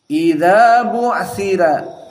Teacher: Bu'thira karena roknya meskipun fathah tapi sebelumnya kasroh, sehingga dibaca dalam keadaan at-tarqiq